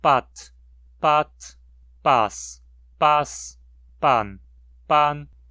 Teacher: Mas digamos que a língua posteriormente, na sua evolução, perca a distinção de vozeamento e todas as consoantes se tornam surdas. Com a perda de vozeamento, o tom é a única forma de diferenciar as sílabas agora.